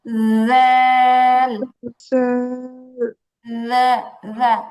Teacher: জিহ্বাটাকে একদম হালকা রেখে উপরের দাঁতের আগার সাথে লাগাতে হবে।